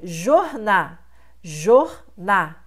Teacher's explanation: Você tem o apagamento do L, porque jorná vem de jornal.